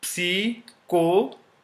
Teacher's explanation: P is always pronounced in the starting of a word, unlike English.